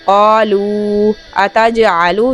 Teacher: قالوا اتجعل، جیم پر قلقلہ کریں گے